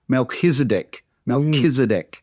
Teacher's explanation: You don't need to pronounce a every time you say MelkiseDC, but say it with a K instead of a ch sound is my point